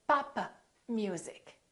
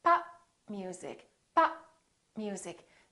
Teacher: so I didn't release my lips